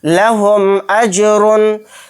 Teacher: मीम साकिन के बाद हमज़ा आया तो यहाँ पर भी इज़हार शफवी का कायदा होगा, मीम को ज़ाहिर करके पढ़ेंगे